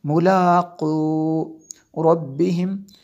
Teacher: میم کے بعد دوسری میم ہے تو یہاں پہ ادغام شفوی ہوگا